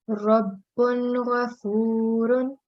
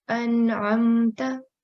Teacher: we will pronounce that with clear sound without any sustained nasal sound. So it will be clear, short and clear sound. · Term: Izhar